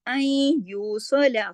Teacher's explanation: ادغام ناقص ہو گیا، نون کی کچھ آواز ہے اور کچھ نہیں. آئین یوصلا، سواد کو موٹا پڑھنا ہے.